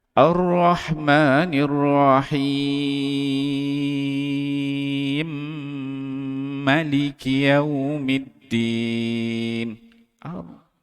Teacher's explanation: ma tu nampak dah pendek sikit tapi dengung dia hilang pula